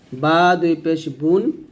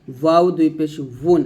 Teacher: যেমন বা দুই পেশ বুন হয় আর ওয়াও দুই পেশ উন, উন হবে, এটা দুই ঠোঁট গোল করে বলতে হবে, বাটা দুই ঠোঁট মিলিয়ে বলতে হবে, ওয়াটা দুই ঠোঁট গোল করে